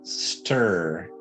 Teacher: stir we skip the i in stir almost completely and so we go straight from the t sound straight to the ark so our tongue is up here at the t right behind our front teeth and then we just come right back to the er stir